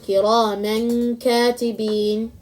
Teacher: The back of the tongue lightly touches the adjacent roof of the mouth while emitting the gunna, then pronounce Kaf. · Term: Ikhfaa